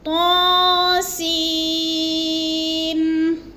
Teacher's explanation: तो के ऊपर खड़ी ज़बर है, थोड़ा कम लंबा करना है, और सीन को हमने क्या करना है, ज़्यादा लंबा करना है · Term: मद